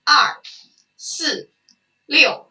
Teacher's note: you hear that they have the same tone and they have the angry tone